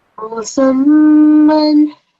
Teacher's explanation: keep that nasal sound going for 2 seconds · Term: meme mushaddad